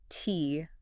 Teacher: That first sound is t. That little puff of air.